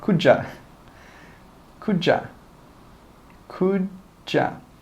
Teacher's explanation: Could you repeat that please? We don't say could you. We join those together and we say could ya?